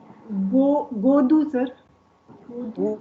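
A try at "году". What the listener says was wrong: ऊ पे है ना स्ट्रेस, ऊ पे। गदू।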